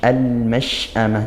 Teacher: Al mash'amah shin sukun, dia dari tengah lidah ya, naik ke langit-langit mulut kita. Al mash'amah, jadi bukan dari bibir, bukan mash, tapi dari tengah lidah.